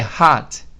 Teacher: Quando a pronúncia dessa palavra é hot. É tipo, o O tem mais um som de A e o T é muito discreto, às vezes nem sai.